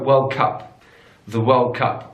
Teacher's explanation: In British English, we put the stress on the second word.